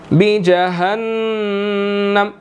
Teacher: نون مشدد ہے، یہاں پر ہم نے غنہ کرنا ہے